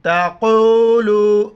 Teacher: بڑی قوف ہے، موٹا کر کے پڑھیں گے